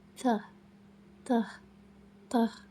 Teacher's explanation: Cara mengucapkan teh itu letak ujung lidah di antara gigi atas dan bawah, lalu hembuskan udara keluar. Jangan biarkan lidah menempel terlalu erat dengan gigi, karena harus ada celah kecil untuk udara keluar.